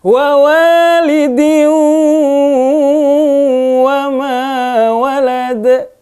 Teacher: Jangan wa walidiu ya, tapi harus ada sengaunya di hidung. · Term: Idgham bi gunnah